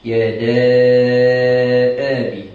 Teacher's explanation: mad jaiz munfasil 4 atau 6 harakat